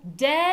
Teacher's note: We're going to make a clear long high syllable.